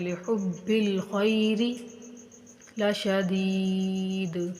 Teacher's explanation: خیر حروف لین ہے، اس کو بغیر کھینچے نرمی سے پڑھیں گے